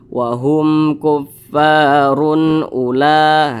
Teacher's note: Maka dibaca jelas, tidak berdengung. Jadi jangan dipanjangkan, dibaca pendek. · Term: izhar halqi